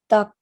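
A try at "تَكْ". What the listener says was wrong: Very good. So we have tak. Nice and soft.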